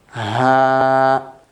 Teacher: this is from the bottom part of the throat, a deeper sound comes.